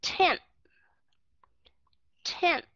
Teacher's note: Chúng ta không có đưa cái lưỡi lên. Mà chúng ta sẽ cho cái lưỡi ngay khi mà chúng ta đọc tới cái âm N đó, thì các bạn sẽ đưa cái lưỡi lên ngay để mà đọc âm TH. · Nhớ là TH chúng ta bắt buộc phải cho chóp lưỡi cho hai hàm răng.